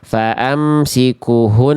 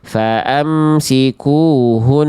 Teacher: kunya dikasih dua harakat panjangnya · Faamsikuhun, harusnya faamsikuhun, kunya dikasih 2 harokat panjangnya ya